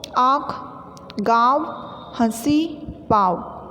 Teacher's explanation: अनुनासिक का उच्चारण नाक और मुंह से किया जाता है